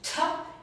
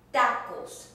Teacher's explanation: but again you do not have to make that puffy that you don't have to have that puff of air